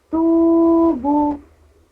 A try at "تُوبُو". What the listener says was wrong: دیکھیے با میں بھی واو مدہ ہے کھینچنا ہے اس کو. تو بو.